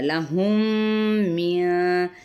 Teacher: اب یہ میم ساکن کے بعد میم متحرک ہے تو کون سا ہے، ادغام شفوی کا قاعدہ